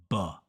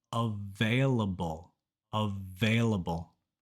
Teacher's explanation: in English the letter V always makes that V sound and for B the lips always touch and make a small pop B so it's available available this video was super fun to